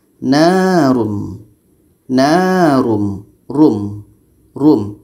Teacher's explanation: Narum muqsadah. Ra tanwin depan dibaca tebal.